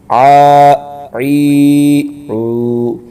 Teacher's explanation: حلق کے درمیان حصے سے ادائیگی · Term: عین